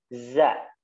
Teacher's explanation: Di mana letak makhrajnya yang telah kita pelajari adalah kepala lidahnya diturunkan ke gigi seri bawah. Za, ya. Ada suara desisnya. Za. Ya, desisnya dihilangkan, ya, jadi suaranya yang mengalir, ya, di situ ada desisnya. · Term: huruf zai